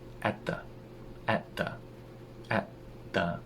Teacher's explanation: at turns into a glottal stop